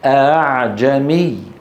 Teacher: نرى على اللوحة تسهيل الهمزة، هو النطق بالهمزة المسهلة بين الهمزة المحققة وحرف المد المجانس لحركتها. إن كانت مفتوحة ننطقها بين الهمزة المحققة والألف مثل أعجمي